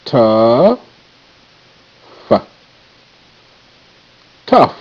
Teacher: in the word tough, the OU is making the irregular sound, schwa sound, or the baby U sound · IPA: /tʌf/